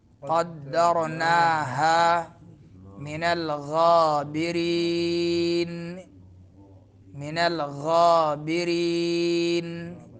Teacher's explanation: را باریک پڑھیں گے، نون میں غنہ ہوگا